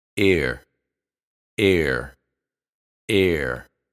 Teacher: that schah in the middle of this sound combination happens naturally as the tongue moves from a to R air air in other words you don't have to do anything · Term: schwa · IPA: [e:r]